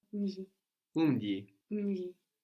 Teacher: And when that goes before a consonant, it's just a So that's what's happening in umji. So the beginning bit is actually mu, only that the u is mostly lost before a consonant.